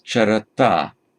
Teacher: So this becomes charata. Note that the N has dropped out. This N is present only in the nominative and accusative singular.